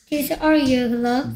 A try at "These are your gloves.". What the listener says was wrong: These are 왜 자꾸 묻는 느낌이 들게 있습니까?